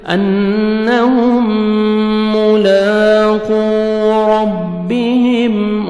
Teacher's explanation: اور قاف کو موٹا کر کے پڑھیں گے انہم ملاقو ربہم را کو زبر ہے را کو موٹا کر کے پڑھیں گے اور میم ساکن کا اظہار ہے جلدی پڑھیں گے انہم ملاقو